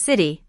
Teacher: A T between two vowels produces a D sound